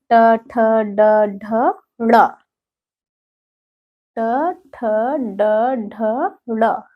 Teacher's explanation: यह मूर्धा को स्पर्श करते हुए जो है इसका उच्चारण हो रहा है ना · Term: मूर्धन्य स्पर्शी व्यंजन